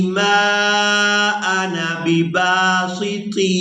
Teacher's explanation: لتقتلنی ما انا بباسط. یہاں پر ہم نے نون کو بغیر کھینچے ادا کرنا ہے